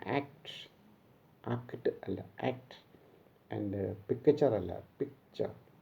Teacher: when two plosives come together in a word, the first plosive is not stressed. It becomes half in pressure. So it is called incomplete plosives.